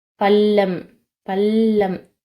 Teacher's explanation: பள்ளம் சொல்லும்போது எங்க போகுது அப்படின்னு பார்த்தீங்கன்னா மேல் அன்னத்தோட நடுப்பகுதியை வந்து தொடுது